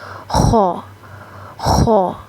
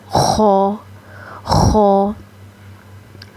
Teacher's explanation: خ کی ادائیگی کے وقت تھوڑی خراٹے کی سی آواز آئے گی، اور خ کی ادائیگی آپ نے کرنی ہے ادنیٰ حلق سے۔ گلے کا جو سب سے اوپر والا پارٹ ہے جو منہ کی جانب ہوتا ہے، گلے کا جو سب سے پہلا حصہ ہے، وہاں سے خ کی ادائیگی ہوگی۔